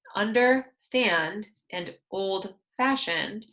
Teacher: we pronounced the stress on the second word · for compound adjectives, understand and old-fashioned, we pronounce the stress on the second word.